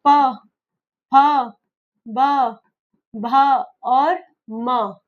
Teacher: प ये होठों से हो रहा है। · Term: ओष्ठ